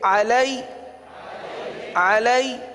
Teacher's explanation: لین کو کس طرح پڑھتے ہیں بغیر کھینچے بغیر جھٹکا دیے نرمی سے معروف پڑھتے ہیں لہذا نرمی کریں گے علی علی ہا زیر